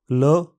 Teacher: ये हिंदी की ता व्यंजन जैसा ही इसका उच्चारण है। ल, इस ध्वनि के उच्चारण में जीभ का सिरा ऊपर के दांतों के पीछे लगाया जाता है। ध्वनि मुंह से निकलती है। कभी कभी जीभ के किनारों को ऊपर की ओर मोड़ना सहायक होता है।